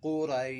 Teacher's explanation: یہ قاف جو ہے حروف مستعلی میں سے اس کو پر پڑھنا ہے